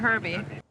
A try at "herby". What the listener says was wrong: We don't pronounce the word like that. You're talking about herbs, where the H is silent.